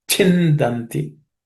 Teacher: In this, the first letter, chin. It's the second letter in the cha class of consonants, so cha varga. It has to be aspirated. So it's chindanti.